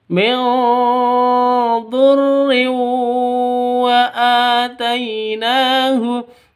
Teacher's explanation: Ini bacaan idgham bigunnah, tanwin bertemu dengan wawu. Cara bacanya masuk ke wawu disertai dengung 2 ketukan.